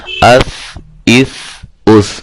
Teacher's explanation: بہت نرم، سیٹی کی آواز نہیں آنی چاہیے